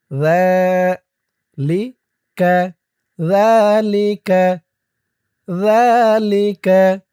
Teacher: জালের উচ্চারণটা কিন্তু একদম নরম হবে।